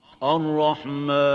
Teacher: So it's Ar-Rahman, not Mon. So avoid nasalization when pronouncing the alif.